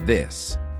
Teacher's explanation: You place your tongue between your teeth and blow air out. In this, the th sound is voiced, so your vocal cords do vibrate. Again, you place your tongue between your teeth, but you should feel the vibration in your throat.